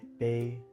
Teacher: When we glide a and e together, pa and e, we get pe. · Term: diphthong